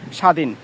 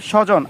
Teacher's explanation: শব্দের শুরুতে বফলা যুক্ত হলে বফলা উচ্চারণ হয় না।